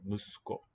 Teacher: It's followed by voiceless. There we're going to devoice, and we don't really hear the U clearly anymore.